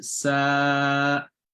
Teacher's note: So in this case here, since the letter that come before the med, there's an alif and there's a yaw mad, it's having a fatha, and so you will elongate the sa with an alif mad, not saya. So because this ya here is not having any sound, so there are 2 mad here.